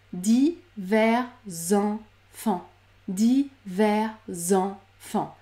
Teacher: Je débute par la consonne sonore z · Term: liaison